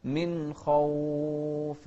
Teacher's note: انتبه هني للإظهار، من خوف، ما نقول من خوف، لا، من خوف، نوضح النون والخاء ونفخم الخاء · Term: الإظهار